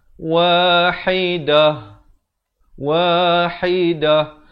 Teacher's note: bila berhenti pada ta marbutah, ta simpul, ta tersebut ditukarkan kepada bunyi ha simpul dan diberikan tanda mati mendatang.